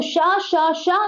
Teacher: शा शा शा ये तो ऊष्म ध्वनि है, लेकिन झा नहीं है